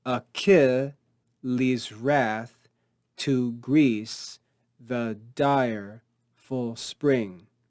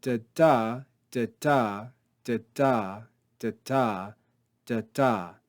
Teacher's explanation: The first syllable short and unaccented, the second syllable longer and accented. So if we read this a little more slowly and with a bit more emphasis on the structure, focusing on these iambic feet, we would read, Achilles' wrath to Greece, the dire full spring. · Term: iambic foot